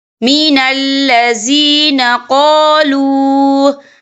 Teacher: یا دیکھیں قالوا، یہاں پہ واو مدہ ہو رہا ہے، واو ساکن ہے، واو ساکن سے پہلے پیش ہے اور اس پر چھوٹی سی مد بھی ہے، تو ہم یہاں 3 یا 4 عدد کے برابر کھینچ کے پڑھیں گے